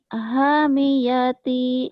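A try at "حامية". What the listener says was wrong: Haknya panjang, minya pendek. Hamiati gitu.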